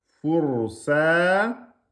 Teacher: On met le alif de prolongation, 2 temps.